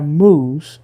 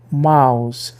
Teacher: Aquele som de U foi empurrado para cima até explodir e virar o ditongo I. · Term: terremoto das vogais